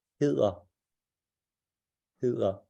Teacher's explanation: the soft D is where you place your tongue behind your lower front teeth